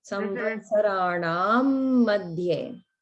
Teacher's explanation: Just watch out for the final dirgha in Samvatsaranam.